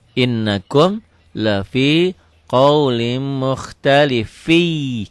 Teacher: Kenapa mukhtalifi? Karena tanwin ketemu iya. Jadi ini idgham bi gunnah.